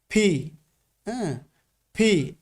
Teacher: না এখানে এফ এর মত কোন উচ্চারণ হবে না এখানে কিন্তু পির পি বলার পরে একটা বাতাস বের হবে এবং প্রেসার দিয়ে এই লেটারটাকে প্রোনাউন্সিয়েশন করতে হবে